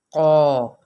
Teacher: الف یہاں پر اپنے پہلے حرف کے تابع ہوگا، کیونکہ یہ قاف پر لیٹر ہے حروف مستعلیہ میں سے، تو اس لیے الف بھی پر ہو جائے گا